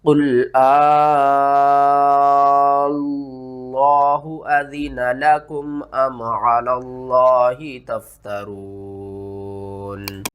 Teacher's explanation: یہاں پر آپ نے کیا کرنا ہے، مد کو 5 الف کے برابر کھینچنا ہے، اور کھینچ کر ہم نے لفظ اللہ کے دوسرے لام کے ساتھ ملانا ہے، پہلے لام کو آپ نے نہیں پڑھنا۔